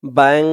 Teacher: গুন্নাটা নাকের ভিতরে চলে গেছে, ব্যাং। তারপরে এখানে দ্যাং, দ্যাং, নাকের ভিতরে চলে গেছে। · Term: ইকফা গুন্না